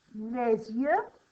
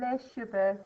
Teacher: we pronounce the S if it's followed by a word beginning with Y as an exception to the rule